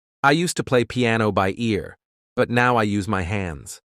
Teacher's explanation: Notice how the emphasis on the word hands adds humor, and the pause before the punchline is essential.